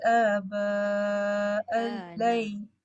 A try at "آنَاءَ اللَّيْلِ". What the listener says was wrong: Ana. Titik nun bukan titik ba. Ana akak sebut abah.